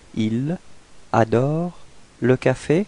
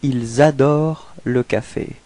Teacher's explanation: So the reason for that is that adore, you can see that it's starting with a vowel, and in this case it's possible to make this small link between the S and the A. So actually liaison means link, so if you want to link the words, in this case you will get ils adorent le café.